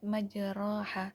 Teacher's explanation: Imam Hafiz membacanya dengan bacaan imalah, alif setelah ro, berdasarkan hal ini ro menjadi tipis, dibaca tipis. Imalah ialah suara di antara alif dan ya.